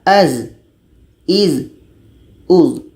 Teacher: Zai ini letaknya pada ujung lidah menempel dengan bagian atas gigi seri bawah. Ujung lidah menempel dengan bagian atas gigi seri bawah.